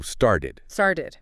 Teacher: the t sound before that ending in started often softens to sound like a d